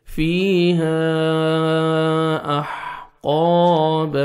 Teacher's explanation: حروف مدہ کے بعد نیکسٹ کلمہ کے سٹارٹنگ میں حمزہ ہے، آپ نے 3 سے 4 سیکنڈ ایکسٹرا مد کرنی ہے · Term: مد جائز